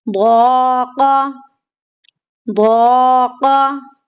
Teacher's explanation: قاف کو نہیں کھینچنا کیونکہ قاف متحرک ہے